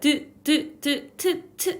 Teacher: 드트 소리는 치조음에서 나는 소리, 우리 배웠어요. 트 하면 치아 바로 뒤를 혀끝이 치면서 공기의 흐름을 방해하는 치조음이죠. 그리고 이 모음은 경구개음 쪽에서 소리가 난대요.